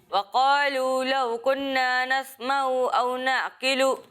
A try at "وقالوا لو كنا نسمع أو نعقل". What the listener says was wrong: اچھی کوشش ہے لیکن یہاں پر نون مشدد ہے. اور یہاں غنہ کرنا ہے اور غنہ کی مقدار ایک الف کے برابر ہوتی ہے. ٹھیک ہے، تو آپ نے غنہ کی مقدار پوری کرنی ہے. پھر دوسری بات یہ نوٹ کر لیں کہ یہاں عین ہے، یہاں بھی عین ہے. ٹھیک ہے، اور بیچ میں حمزہ ہے.